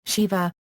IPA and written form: ˈʃɪvə (Shiva)